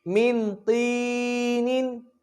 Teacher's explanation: طا موٹا پڑھا جائے گا، یہ حروف مستعلیہ میں سے ہے